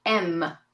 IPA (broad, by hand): em